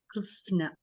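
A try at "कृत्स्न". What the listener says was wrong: So you were saying Krishna, you are saying Sha for a Sa. Sa as in Singapore, snake, Sa, Switzerland, that. And not Sha as in Shanghai. It's not Sha, it is Sa.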